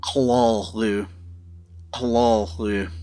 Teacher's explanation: Ooh, as in shoot or boot. The guttural L before it will flavor the oo sound and bring it down a little lower in the throat.